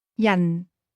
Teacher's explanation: This word is pronounced with a falling tone.